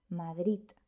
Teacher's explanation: Por ejemplo, en la palabra Madrid, muchos hablantes eliminan la D final y dicen simplemente Madrid. Algunos, en lugar de una D, pronuncian más bien una T, Madrid. Y algunos pronuncian una Z en lugar de una D, Madrid.